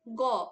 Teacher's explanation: কিন্তু তুমি গ উচ্চারণ করো, তোমার কণ্ঠস্বর কিন্তু গম্ভীর হয়ে যাচ্ছে। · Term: ঘোষ